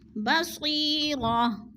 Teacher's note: گول تا وقف کی صورت میں ہم نے اس کو ساکن کر دینا ہے